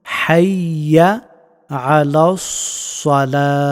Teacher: সদ হরফটি মুখ ভর্তি করে উচ্চারণ করতে হয়